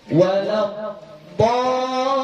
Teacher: Maka ini wajib kita baca panjang 6 harakat. Kenapa? Karena dia adalah mat lazim kalimi mutaqal.